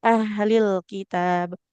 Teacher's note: kalau kaf itu sifat aliran nafasnya ketika berharakat tidak terlalu berlebihan